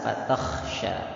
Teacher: Kha tebal jangan lupa. Fatah kha itu makhrajnya dari tenggorokan bagian atas.